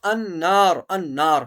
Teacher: النار یہاں غنہ کیا جائے گا کیونکہ نون کے اوپر تجدید ہے، نون مشدد ہے